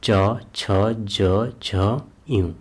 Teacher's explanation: इनका उच्चारण तालू और जीभ से होता है